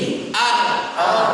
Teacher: Ada getarannya. Pertama dia menempel gusi. Kedua dalam sifat dia harus menyertakan getaran yang dimin.